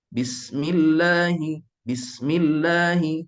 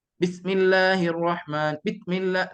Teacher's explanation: Sin itu adalah sifatnya hams, nafas berterusan, dan juga sifatnya rakhawa, suara berterusan.